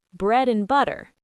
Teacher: We don't say and clearly. We just say a tiny N sound. This keeps the beat of the sentence. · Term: weak forms